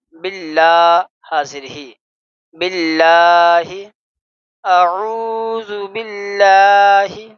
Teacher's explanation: یہ دیکھیں کل سبق نمبر 16 میں ہم نے پڑھا تھا کہ لفظ اللہ سے پہلے زیر آئے تو اللہ کے لفظ کو، لام کو ہم باریک پڑھیں گے۔ باللہ میں زیر ہے تو اس کو ہم باریک پڑھیں گے